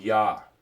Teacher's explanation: the vowel has a y sound in the front of it so this would be a yah sound so we have a